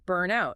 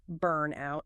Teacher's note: You stress the burn, burnout.